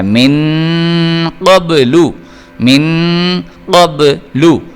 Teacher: قاف جو ہے یہ حروف قلقلہ میں سے, اس کو آپ نے موٹا کر بھی پڑھنا ہے اور اس کے علاوہ یہ حروف اخفاء میں بھی آ رہا ہے تو اس لیے آپ نے یہاں پہ غنہ کر کے پڑھنا ہے.